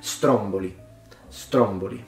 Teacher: majority of words in Italian tend to have as stress in the penultimate vowel but not in this case